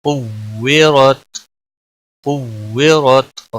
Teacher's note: کاف واو پیش کو، واو زیر وی، کوے، را تا زبر رت، قویرت، قویرت، را موٹا پڑا جائے گا کیونکہ اس کے اوپر زبر ہے